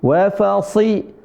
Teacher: sinya tebal dia seolah-olah dia mau ngangkat dia mau ke fathah Padahal dia kasrah